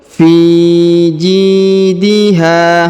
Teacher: huruf Fi dipanjangkan dua harakat karena di depannya terdapat Ya Sukun